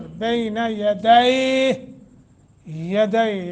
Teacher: یا ساکن ما قبل فتح ہے حرف لین تھوڑا نرمی کے ساتھ لمبا کر کے